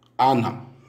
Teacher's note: Le deuxième de A, de Anna, est bref. Le premier A accentué est également bref devant deux consonnes